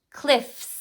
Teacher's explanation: going to check the sound before you add that s cliff that is a voice box off sound I don't have my voice box on it's off